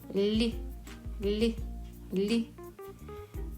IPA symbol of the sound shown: л'